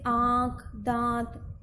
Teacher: अनुनासिक ध्वनि, इस ध्वनि का उच्चारण मुंह के साथ साथ नाक से भी होता है।